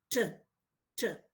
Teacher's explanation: Because if you look at the obstruction in picture 1, the blade of the tongue makes a complete closure with the alveolar ridge. And then in picture 2, you can see that the articulators open up abruptly and the air escapes freely with an explosion, but without any vibration of the vocal folds. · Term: fortis alveolar